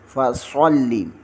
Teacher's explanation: صاد کو موٹا پڑھیں گے اور صاد کو لام کے ساتھ ملائیں گے